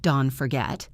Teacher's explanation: The T in don't connected to the F in forget